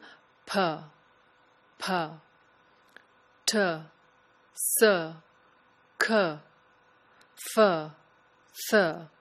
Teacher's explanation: Unvoiced consonants are made just with air. You do not use your vocal cords. You just say the sound with a burst of air coming out of the mouth.